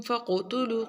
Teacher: قاف کے اوپر کلکلا قاف کو موٹا بھی پڑھیں گے کلکلا بھی